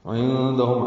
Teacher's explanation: عین وسط حلق سے ادا کریں گے، نون ساکن کے بعد دال آنے کی وجہ سے اخفا ہے. ہم میں میم ساکن کے بعد میم آنے کی وجہ سے ادغام بھی ہے، ادغام شفوی مال غنہ.